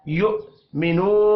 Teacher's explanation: واو مدہ ہے ایک الف کے برابر کھینچ کر پڑھیں گے